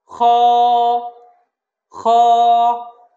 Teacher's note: খ হরফটা যখন আমরা বলবো তখন কণ্ঠনালীর উপরিভাগ থেকে বলবো এবং খ হরফটা আমরা এক আলিফ টানবো।